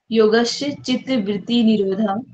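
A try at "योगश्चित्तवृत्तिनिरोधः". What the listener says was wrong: आपने बोला योगस य तो है ही नहीं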